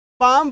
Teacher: यहां पे एल जो शब्द है एल जो अक्षर है इसका उच्चारण ही नहीं हो रहा है इसका उच्चारण ही नहीं हो रहा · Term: साइलेंट